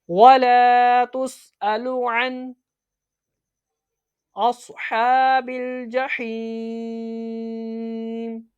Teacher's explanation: جب ہم وقف کریں گے اس صورت میں یہ ساکن میں تبدیل ہو جائے گا، عارضی سکون ہو جائے گا۔ حروف مدہ کے بعد عارضی سکون، مد عارض، اس کو 3 انگلیوں کے برابر کھینچ کے پڑھا جاتا ہے